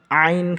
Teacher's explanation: আইনের উচ্চারণ হলকের মাঝখান থেকে শক্তভাবে উচ্চারণ হবে।